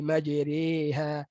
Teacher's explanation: Majriha itu imalah. Bukan baris bawah majri, baris atas majra. So majri baris atas yang dicondongkan. · Asalnya baris atas majraha, tapi imam kita meriwayatkan bacaan imalah.